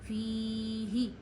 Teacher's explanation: हा गले के आखिर से अदा करिए और इसके नीचे ज़ेर आपको नहीं खींचनी है, क्योंकि ज़बर ज़ेर पेश आप नहीं खींचते हैं ना ही झटका देते हैं।